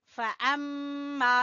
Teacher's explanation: میم مشدد کا غنہ ادا کریں گے